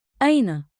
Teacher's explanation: Keep it rising at the end, curious, friendly.